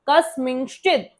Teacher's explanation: तो मी को हम कैसे बोल रहे हैं? नासिका से भी बोल रहे हैं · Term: चंद्र बिंदु